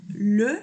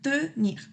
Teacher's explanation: Y en vez de decir O, decimos E, pero con la boca en O.